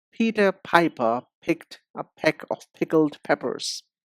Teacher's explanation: p, which is the voiceless sound, makes a bigger puff of air. Put your hand in front of your mouth and make the p sound.